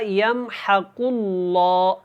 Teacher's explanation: یہاں پہ جو قاف اور یہ جو لام ہے یہ دونوں پر ہیں، موٹا پڑھنا ہے ان کو۔ اللہ والا لام ہے، اس سے پہلے پیش ہے، اور قاف حروف مستعلیہ میں سے ہے، تو اس کو آپ نے موٹا پڑھنا ہے۔